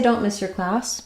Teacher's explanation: class is going to be longer so all three of these words are going to be shorter